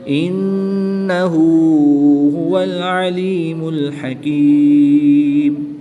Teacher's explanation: यहाँ भी नून मुशद्दिद में गुन्ना आनी करके पढ़ेंगे